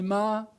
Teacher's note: the S can completely disappear such as in several South American pronunciations of Spanish where they'll not say Mass they'll say ma but a bit